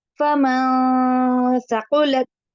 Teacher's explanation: فمن نون ساکن کے بعد سا آ گیا تو اس نے سا کی وجہ سے نون کیا ہو گیا، ناک میں چھپ گیا